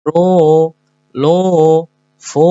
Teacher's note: Jadi semuanya diayun ru lu fu ya. Ini wau sukun setelah domah sama dua harakat.